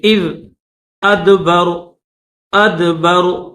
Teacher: غال پر زبان کو تھوڑا سا باہر نکالیں گے